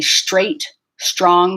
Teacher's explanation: so i'm getting ahead to the tr and i'm making like i'm kind of like making a sho sound with my sub because it's easier to get to the sound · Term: STR clusters